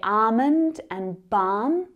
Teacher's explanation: We would say balm with a silent L.